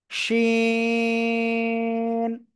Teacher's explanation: জিহ্বার মধ্যখান, তার বরাবর উপরে তালুর সঙ্গে লাগিয়ে শা শা শব্দ করে উচ্চারণ হবে।